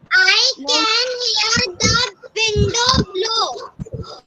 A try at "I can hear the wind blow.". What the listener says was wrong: Not window. It's wind blow. Wind blow. Okay, I can hear the wind blow.